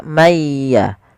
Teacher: itu berarti dia dihilangkan atau dimasukkan ke huruf setelahnya contoh ada nun mati Man ketemu ya maka mayya sambil ditahan suara gunahnya mayya sedangkan ikhfa adalah membaca suara Nun di antara keduanya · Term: idgham